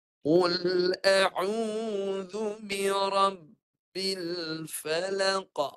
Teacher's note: Huruf ba macam biasa ketika mati ditahan suara. Syiddatun kemudian dilepaskan dengan berbaris bawah.